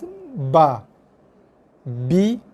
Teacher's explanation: Huruf ba keluar daripada 2 bibir. Bibir atas, bibir bawah yang bersentuh, ada sedikit tekanan. Tekan sikit.